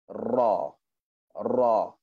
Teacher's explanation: Okey, guna atas dia, permukaan atas, hujung lidah atas, sentuh pada langit-langit atas. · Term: huruf ra